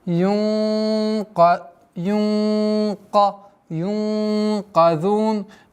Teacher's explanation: Удержание в размере двух огласовок твердое. Ихфа у нас твердое сокрытие, потому что каф твердое.